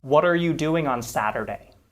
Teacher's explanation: there are two flapped t's here · notice how the t is flapped